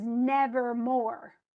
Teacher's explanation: And so it's stressed, unstressed, stressed.